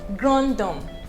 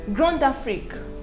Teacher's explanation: the d becomes pronounced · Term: liaison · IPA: /grãtɔm/